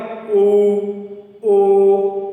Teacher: यानी जो हमारे होठों की आकृति है वो कैसी बन रही है? गोल बन रही है। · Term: वृत्ताकार वर्ण